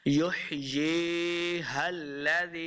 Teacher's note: یا کے اوپر مد ہے، ایک تو یا مدہ ہو رہا اس کے اوپر مد بھی ہے تو ہم نے اس کو لمبا کر کے پڑھنا ہے